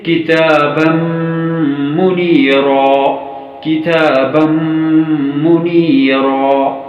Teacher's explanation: کتابا منیرا، میم ساکن کے بعد میم جو کہ مشدد ہے، یہ ادغام شفوی کا حصہ ہے، پس میم مشدد پر غنہ ہوگا۔